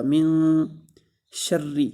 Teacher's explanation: من نون ساکن کے بعد حروف اخفا میں سے شین آ رہا ہے تو نون ساکن پر اخفا ہوگا۔ من شر، شین کے اوپر زبر ہے، اس کو لمبا نہیں کریں گے اور را کو سختی کے ساتھ پڑھیں گے۔